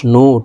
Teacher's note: পেশ নু ঠোঁট গোল করে এক আলিফটা নিয়ে পড়বো